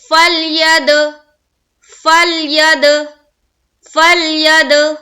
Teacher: فل میں آواز رک جانی چاہیے، جبکہ دال میں قلقلہ ہونی چاہیے.